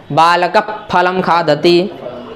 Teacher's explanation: अब यहाँ देखिए फा के पहले विसर्ग है कि नहीं, बालकः फलम खादति में फा के पहले विसर्ग है, तो इस विसर्ग का उच्चारण मुंह से ओष्ठ से करना, बालक फलम खादति, आधा बोलना है और उसको ओठ से बोलना है विसर्ग को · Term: उपधमानीय